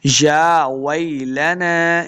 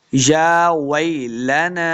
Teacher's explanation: या के ऊपर देखें खड़ी ज़बर है, इसको लम्बा करेंगे, वै को लम्बा नहीं करना।